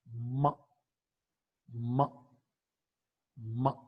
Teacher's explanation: ma is a voiced bilabial nasal consonant sound.